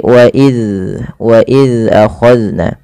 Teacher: Zal yaitu ujung lidahnya menempel dengan gigi seri atas. Maka dan huruf zal tidak boleh terpantulkan, tidak boleh wa iz ya.